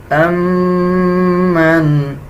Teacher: میم کے اوپر شد آ رہا ہے، غنہ کیا جائے گا اور غننے کی آواز کو ناک سے نکالیں گے